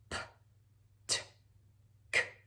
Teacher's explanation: And they come out P, T, K, without any voice, without any pitch. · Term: unvoiced plosives